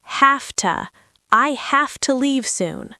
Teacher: When we speak this fast, the v sound in have changes to an F sound. So have to becomes have to.